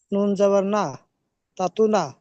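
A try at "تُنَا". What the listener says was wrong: তা তু না নয়, ঝটকা দিতে হবে।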